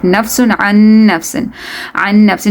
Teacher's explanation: Nafsin tanween, after that there's sheen from haruf ikhfa, so you're going to be taking the sound of this tanween into the nose